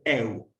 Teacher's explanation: Si tenemos un sonido E y un sonido U, siempre tenemos que acentuar el sonido E, que es el más abierto, porque si acentuamos el sonido cerrado, ahí ya no hay diptongo.